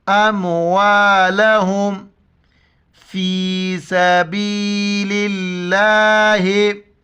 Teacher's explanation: लफ्ज़ अल्लाह के पहले ज़ेर हैं, इस वजह से लफ्ज़ अल्लाह को हम बारीक करके पढ़ेंगे